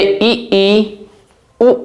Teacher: जब हम उच्चारण करते हैं तो हमारा मुंह बहुत ही कम खुलता है। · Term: सम्वृत स्वर